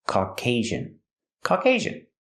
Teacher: Put the stress on the second syllable. And the second syllable has a long A sound.